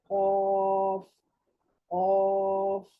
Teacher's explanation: زبان کے پچھلے حصے کو اوپر کے تالو سے لگانے پر حلق کی طرف سے جو تالو ہے, نرم تالو کا نرم حصہ جو حلق کی طرف ہے, اس کو زبان کی جڑ لگانے سے موٹی آواز کے ساتھ یہ نقطوں والا جو قاف ہے یہ ادا ہوتا ہے